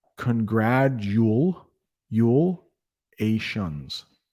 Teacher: I know there's a T in congratulations. We pronounce it as a D.